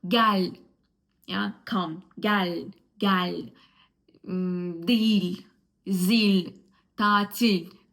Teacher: Pay attention that at the end of the word, most of the cases, the L is pronounced soft, which can be difficult because you are not used to the soft L.